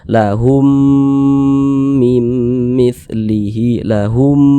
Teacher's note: jadi suaranya itu kita tahan kita tahan kita panjangkan sejenak kita dengungkan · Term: dengungan